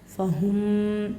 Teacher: میم کو میم سے ملا کر غنہ کے ساتھ پڑھنا ہے